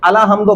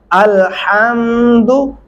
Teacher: अलहम्दु पढ़ने से आप लाम के ऊपर जबर लगा रहे होते हैं